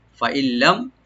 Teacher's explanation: মিম সাকিন এখানে জাহার করব, এখানে গুণনা হবে না